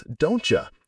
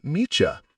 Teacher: The T and the Y sounds blend to create a new cha sound. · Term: assimilation